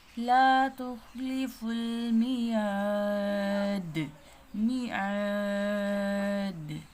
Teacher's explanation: یا مدہ کھینچ کے پڑھیں گے، اور وقف کی صورت میں یہاں پہ کھینچ کے پڑھتے ہیں کیونکہ یہاں پہ مد عارض وقفی ہوتی ہے، کلمہ قرآن میں